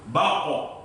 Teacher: ketika membaca huruf qaf yang qalqalah, pantulannya tetap harus tebal.